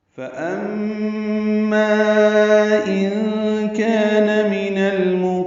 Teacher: فَأَمَّا میم مشدد پہ غنہ ہے، ما الف مدہ کے بعد حمزہ آنے کی وجہ سے مد منفصل ہے. ان کان میں نون ساکن کے بعد کاف آنے کی وجہ سے اخفا ہے، نون کی آواز چھپائیں گے. کان میں کاف باریک ہے، یہ الف مدہ ہے، 2 حرکات لمبا ہے.